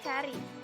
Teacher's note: bunyi A dengan ciri-ciri rendah, depan, tak bulat